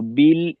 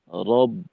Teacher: তো বিল এইখানে আওয়াজ চালু থাকবে। এইখানে যে পরিমাণ সময় আমি আওয়াজকে চালু রাখবো। পরবর্তীতে রব এখানে আওয়াজটা আটকাইতে হবে। আওয়াজকে আটকানোর ক্ষেত্রেও ওই পরিমাণ সময় দেওয়া।